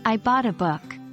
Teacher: The stress falls on the word buy in the question and book in the answer, as these are the pieces of new information. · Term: sentence stress